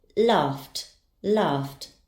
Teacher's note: Its sound ends in f. The ed ending will be pronounced as t. Laughed, laughed.